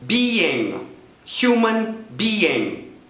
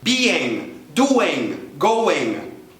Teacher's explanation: no meio você vai sentir lá atrás o seu palato mole dando uma descidinha